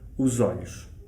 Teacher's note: Eu faria a ligação com Z, com o som Z, e diria os olhos.